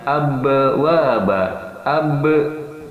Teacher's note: makhorijul huruf nya berada pada kedua bibir yang disentuhkan · tidak ada hembusan nafas yang keluar nafasnya terkunci · ba-nya ini jar, tidak ada hembusan napas yang keluar, napasnya terkunci. Kemudian yang kedua, ba mempunyai sifat syiddah, yaitu ditekan pada kedua bibir. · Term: sifat Zaher, sifat jahar